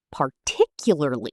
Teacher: The stress is on tick.